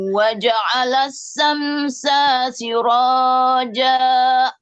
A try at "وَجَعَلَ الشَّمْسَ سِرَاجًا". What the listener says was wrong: Awas, samsa, sa tadi saya mendengar dibacanya waja'ala syamsa, sa itu enggak boleh karena setelah sin tidak ada alif kan? Syaratnya kalau ada patah huruf apa saja. Ini kebetulan syamsa sin. Itu ada patah di si huruf sin enggak ada alifnya.